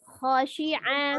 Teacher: kho dari tenggorokan bagian atas. Khosyi'ah khosi'ah, khosi'ah, ya.